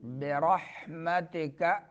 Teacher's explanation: را کو پر پڑھنا ہے، ہا کو درمیان حلق سے